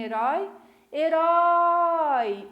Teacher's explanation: Qual é a sílaba tônica da palavra herói a última né